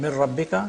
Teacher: noon completely is lost it becomes ra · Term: complete assimilation